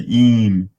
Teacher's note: E becomes nasalized because of the M coming before it.